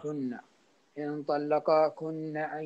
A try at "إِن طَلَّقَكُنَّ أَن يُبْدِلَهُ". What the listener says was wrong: لا لا تزيد المد، لا تزيد الفتحة، تحط مد. إن طلق كنا.